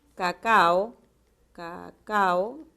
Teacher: cacao cacao son vocales abiertas hay que separarlas